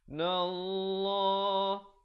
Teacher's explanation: Lafzul jalalah dibaca tebal 2 harakat.